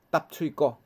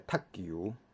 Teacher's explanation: 头前即三个PTK做韵尾收尾的即个入声的第四声咧，伊拢会变做第八声